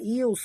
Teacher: Kita tebal. Yus. Naikkan lidah ke atas ya. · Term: huruf sad